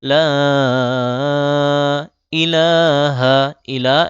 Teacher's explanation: লাতে তিন আলিফ টান দিতে হবে